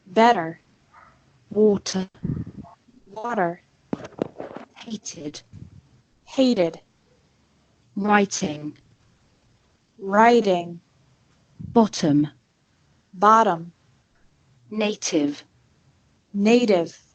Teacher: Americans often pronounce the letter T like a quick D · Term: the T sound